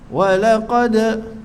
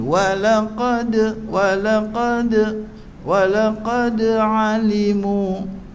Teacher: wa bulat mulut, nipis, lam nipis, lam lembut, lam lencong, qa turut tebal.